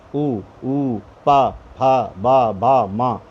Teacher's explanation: ओष्ठ का मतलब दोनों होंठों का स्पर्श होना, दोनों होंठ आपस में मिल जाते हैं, आपस में चिपक जाते हैं, बाद में खुलते हैं। ऊ पा फा बा बा मा, बिना होंठों को बंद किए स्पर्श किए हुए आप इन वर्णों को नहीं बोल सकते।